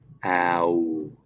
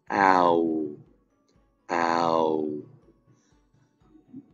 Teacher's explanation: When I end the owl sound, my mouth closes and my lips almost touch.